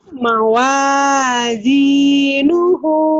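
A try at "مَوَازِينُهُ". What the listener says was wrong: Zainya rapuh. Zainya rapuh. Mawazi.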